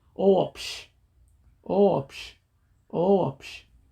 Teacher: because Omega is a vowel, and it comes after the Omicron and Epsilon combo, then you add a W sound in between. So when you pronounce the whole word, it will be Oopsh, Oopsh, Oopsh.